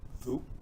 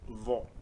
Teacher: vu, donc qui se prononce devant la bouche, et vo, qui se prononce au fond de la bouche